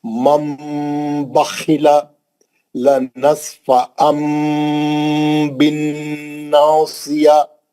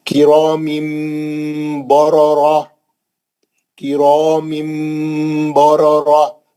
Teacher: نون کی آواز کو میم سے بدل کر غنے کے ساتھ پڑھنا ہے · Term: اخلاب